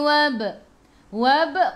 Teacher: di tengah-tengah ayat ada baris sukun kena baca melantun. Lantunannya kecil, namanya qalqalah sughra